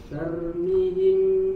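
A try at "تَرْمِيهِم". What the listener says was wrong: Mi-nya panjang Pak. Tarmihim. Coba yang tarmihim. Mi-nya panjang. Sekali lagi Pak, tarmihim. Panjang.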